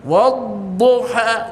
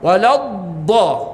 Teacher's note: Huruf dhad bukan berada di hujung lidah.